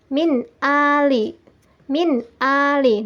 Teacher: suara nun dibaca dengan jelas dan tidak terpengaruh oleh huruf sesudahnya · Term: idhar halqi